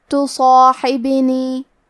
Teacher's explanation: حرف الحا کی ادائیگی حلق کے درمیان والے حصے سے ہے